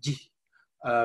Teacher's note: there's a subtle contrast in the voicing of the final vowel in the first person singular which is rather whispered